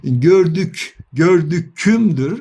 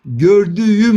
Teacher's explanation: yumuşak G sesi Aslında K sesinden dönüşmüş bir sestir